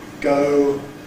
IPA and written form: gəʊ (go)